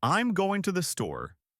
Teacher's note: For example, in the sentence, I'm going to the store, the words going and store might be stressed, while I'm and to the are said quickly and softly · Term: stress patterns